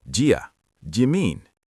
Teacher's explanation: You don't want to heavily separate the words do, you, mean. Native speakers link the first two words so tightly it sounds like one syllable.